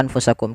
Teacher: Adanya nun sukun bertemu dengan huruf fa, yang dimana nunnya disamarkan ke huruf fa. Nunnya disamarkan ke huruf fa, jangan diganti. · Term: ikhfa